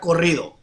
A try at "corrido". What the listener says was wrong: Corrido. Yeah, you gotta really roll your R's. Corrido.